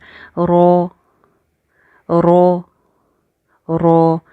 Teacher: तकरार तो इसके अंदर होती ही है लेकिन इतनी ज्यादा तकरार नहीं करनी कि एक र के बजाय कोई तीन से चार र अदा हो रहे हैं